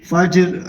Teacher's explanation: یہ را جو ہے یہ باریک ہوگی کیونکہ را سے آ کے نیچے زیر ہے